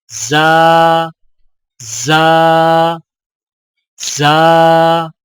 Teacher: زا سیٹی والی آواز ادائیگی کے وقت زبان کی نوک کو سامنے والے نیچے کے دو دانتوں کے کناروں سے مضبوطی سے لگائیں، جیسے زا زا زا.